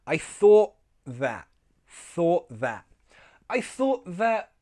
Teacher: Let's make that /t/ glottal